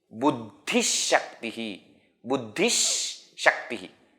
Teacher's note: If the next one is Sh, Visarga also will be pronounced as Sh.